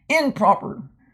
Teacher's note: your lips are going to try to come together improper so it's a euphonic change that means it's makes it easier